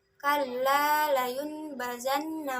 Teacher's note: Iklab terjadi ketika nun sukun atau tanwin bertemu huruf ba. Cara membacanya adalah menggantikan huruf nun sukun dan tanwin menjadi suara mim sukun, lalu disembunyikan ke dalam huruf ba disertai dengan dengung.